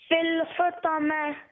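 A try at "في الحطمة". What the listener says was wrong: Fil hutamati. Finish the full word. Fil hutamati.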